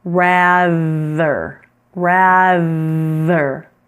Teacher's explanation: So this rather has the TH that is voiced.